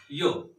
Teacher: यातला य जो आहे य, या वर्णामध्ये मित्रांनो ई हा स्वर लपल्याचा भास होतो. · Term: अर्धस्वर